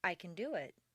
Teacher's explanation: reduce the positive can to kun and stress the verb